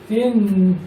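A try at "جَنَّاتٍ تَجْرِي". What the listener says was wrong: হ্যাঁ তা হলো গিয়া ইকফার 15 হরফের এক হরফ, অতএব এখানে গুণা হবে জান্নাতিন। তিন বলে হবে না। এর আগে গুণা হবে তিন তাজি। তিন হইলো যে ইকফার 15 হরফের এক হরফ এটা। এটা গুণা করতে হবে তো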